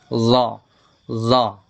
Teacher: Makhraj huruf za adalah ujung lidah yang menyentuh ujung gigi seri atas.